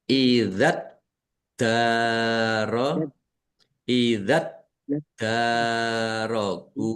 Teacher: dalnya dibaca dobel ada tasdidnya tetapi tidak dipantulkan ya kalau dal kalau tasdid tidak dipantulkan darogu fiha Ha dal fathah alif mad thobi'i.